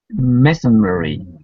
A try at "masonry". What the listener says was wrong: Masonry. It should be 3 syllables.